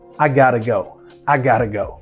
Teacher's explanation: Esse T está entre duas vogais numa sílaba átona. Então esse T vira o flap, o som de arara. Então got to vira gotta.